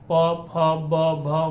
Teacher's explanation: प फ ब भ म हम लोग बोल रहे हैं, तो हमारा दोनों ओठ क्या हो रहा है, सट रहा है, यानी कि इसका उच्चारण स्थान क्या हो गया, ओष्ठ हो गया।